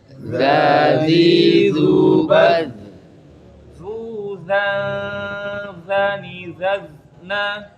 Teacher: Ya zal tidak terangkat atau tipis dia ya, infitah ya.